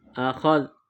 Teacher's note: ذال کی ادائیگی میں زبان کو تھوڑا باہر نکال کے پڑھیں گے